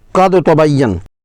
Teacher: پہلے ساکن حرف پر جھٹکا دے دینا جبکہ وہاں ادغام ہونا چاہیے، مثلا قد تبین میں دال پر قلقلہ کرنا